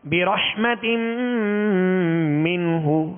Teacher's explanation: ہا پر پیش ہے تو ہونٹوں کو گول کر کے بغیر کھینچے بغیر جھٹکا دیے معروف پڑھیں گے